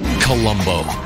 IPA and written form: kəˈlʌmboʊ (Columbo)